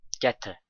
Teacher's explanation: Get and to are linked and pronounced like there is one T sound.